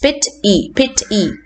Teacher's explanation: It is 2 syllables, pit and e, and therefore the first part, the pit part, will be stressed. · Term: first syllable